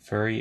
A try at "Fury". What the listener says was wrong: I think it's Fury. I think you said furry.